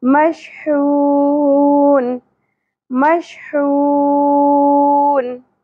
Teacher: تو اب وقف کی صورت میں کیونکہ لاسٹ والا بھی ہمارے پاس ساکن ہو گیا تو ہم نے یہاں پہ مد عارض وقفی کرنی ہے، یعنی کہ 3 الف کے برابر کھینچنا ہے